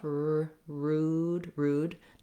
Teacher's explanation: Notice you have rounded lips for the oo.